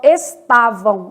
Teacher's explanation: Vamos pegar estavam. Estavam, esse M do final vai ter som de U. Então, estavam, som de U.